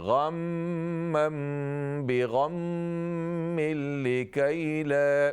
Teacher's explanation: दोनों मीम मुशद्दद हैं, गुन्ना कीजिए।